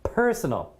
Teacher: So definitely the stress is on the first syllable.